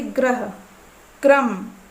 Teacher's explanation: जहाँ पर रा का पदेन रूप लगा होता है, आप इसे उच्चारण करके देखिएगा, जिह्वा में हमारे थोड़ा सा कंपन होता है। जैसे ग्रह, क्रम, इस तरीके से हल्का सा कंपन होगा।